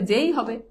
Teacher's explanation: একাক্ষর সর্বনামে একারের মানে একার কোন পরিবর্তন হয় না